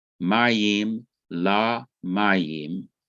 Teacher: Rule number 7 says sometimes immediately before the accented syllable, the inseparable preposition takes the vowel kamis, that is the long ah sound. For example, in the phrase waters to waters, mayim, la mayim, we see that the preposition lameth has the kamis underneath it because it comes before a noun, waters, that has the accent on the first syllable.